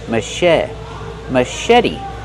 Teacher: Put the stress on the second syllable and make the vowel e like red in bed.